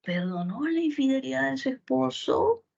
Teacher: Ante esta oración que dice, perdonó la infidelidad de su esposo, con tono final ascendente, oración interrogativa directa total